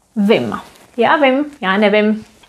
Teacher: Instead of vím, we simply make vim, the I becomes short.